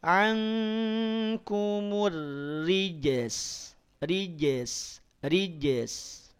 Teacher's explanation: qalqalahnya di sini qalqalah sugro. Secara pantulannya itu tidak sejelas saat ada di akhir kalimat. Karena ar-rijis atau ar-rijasa, jimnya ada di tengah kalimat.